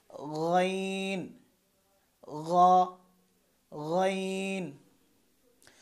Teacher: খ যেখান থেকে উচ্চারণ করেছিলাম ঠিক সেখান থেকেই গইন উচ্চারণ হবে, অর্থাৎ হলকের শেষ থেকে।